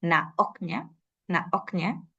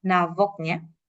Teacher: casi siempre inserta una oclusiva glotal